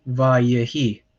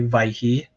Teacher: Like you might hear me say vaihi, um, it so it gets contracted to the point that you don't hear that middle syllable anymore